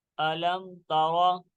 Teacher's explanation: یہاں پہ اظہار شفوی کا قاعدہ ہو رہا ہے، اس لیے ہم نے یہاں پہ غنہ نہیں کیا